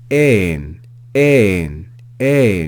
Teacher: you can hear that rise and fall in pitch on that vowel because of the circumflex accent